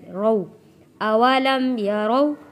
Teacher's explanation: یہاں پہ واو ساکن سے پہلے زبر ہے، حروف لین ہے